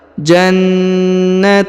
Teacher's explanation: huruf na ditahan dan ditekan ya karena terdapat tanda tasdid